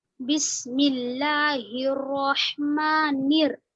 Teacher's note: میم پر کھڑا زبر ہے اور کھڑا زبر برابر ہوتا ہے الف مدہ کے، تو میم کو یہاں پر کھینچ کر پڑھیں گے · بسم اللہ الرحمن، نون را زیر نیر، بسم اللہ الرحمن، ٹھیک ہے، را پر زبر ہے تو را کو بھی کھینچ کر زیادہ نہیں پڑھنا ہے، حرکت ہے صرف، جلدی پڑھیں گے لیکن جھٹکا نہیں دیں گے